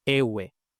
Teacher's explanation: Entonces vemos que Precisamente esta es la forma más parecida a iwi, solo que en lugar de iwi tenemos ewe, es decir, e, wow y otra e. Entonces se pierde la wow entre dos vocales iguales y las dos vocales iguales en contacto se contraen